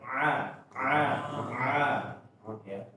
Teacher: Ain ini Bapak-bapak ketika diucapkan tenggorokan menyempit ya itu yang paling gampangnya seperti tertekan ya. A a makanya dia menyempit dan tertekan suaranya.